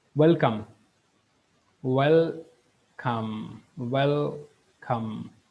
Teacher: இந்த வெல்கம் அங்கிற வேர்டையும் நாங்கள் ப்ரொனவுன்ஸ் பண்ணக்குள்ள அங்கே இருக்கிற L is dark L. So வெல்கம் என்று நாங்கள் சொல்கிறது இஸ் பெட்டர்.